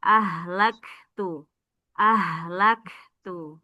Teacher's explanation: Kaf sukun ada hames percikan udara